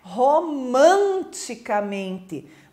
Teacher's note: Mas a sílaba tônica de romanticamente não é o man, é o men.